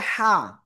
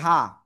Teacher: গলাটা চেপে মুখ দিয়ে হালকা বাতাস বের করে উচ্চারণ করতে হয়। যদি এভাবে উচ্চারণ না হয় সঠিক উচ্চারণ হবে না।